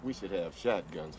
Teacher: he links should and have together so that more closely resembles a phonetic sound of should have